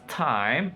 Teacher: glide from low to high front